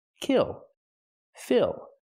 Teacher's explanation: one syllable and that syllable is stressed because there's only one we use the short I sound kill Phil plus the dark L